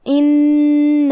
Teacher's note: نون کو 2 حرف کے برابر پڑھیں گے کیونکہ اس پہ تشدید ہے